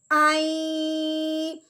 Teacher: حمزہ یا زبر آئی، اس میں نون کی غنے کی ہلکی سی آواز محسوس ہے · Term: غنہ